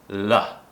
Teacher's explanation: The tongue touches the top of the mouth, and as we produce the sound, the tongue goes down. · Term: light L